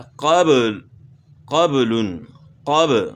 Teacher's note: اس طرح قبل قبل قب، با میں قلقلہ ہوگا، اس لیے اس کو ہم ہلا کر پڑھ رہے ہیں